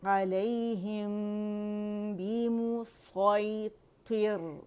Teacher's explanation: میم ساکن کے بعد با آ رہی ہے, تو یہاں پہ ہمارے پاس کیا ہو رہا ہے, اخفاء شفوی ہو رہا ہے, میم کو چھپائیں گے